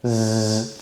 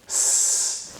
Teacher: You should feel the vibration in your throat for the Z and not for the S. When you can feel the difference, then try the tongue twisters, making sure that you keep the S sound in your mouth and not in your throat.